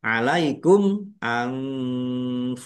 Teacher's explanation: Mim sukun bertemu dengan huruf alif, bacaan idhar syafawi dibaca jelas. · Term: ikhfa